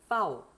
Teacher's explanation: 그 다음에 파우 이거는 F하고 똑같은 방식으로 발음하시면 돼요. 그러니까 윗니가 아랫입술을 깨물었다가 놓으면서 요거를 파우 이렇게 하시면 됩니다.